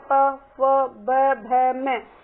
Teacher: होठ बगैर मिलाए हम बोल नहीं सकते